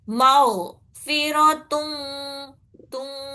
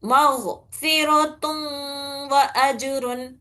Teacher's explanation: ٹھیک ہے، مغفرتن، تم پڑھنا ہے اس کو، تو نہیں، تو پڑھے تو وہ نون کی آواز بالکل بھی نہیں آ رہی، اس میں نون کی آواز تھوڑی باقی رکھنا، ناقص طریقے سے نون کو ملانا، پوری طریقے سے نہیں. ماؤ فیرو تم، تم، اور وہ دو حرکت تک ناک سے آواز نکالنا، اسے غنہ بولتے ہیں.